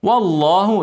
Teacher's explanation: ارقق الواو وفخم اللام قبلها فتحه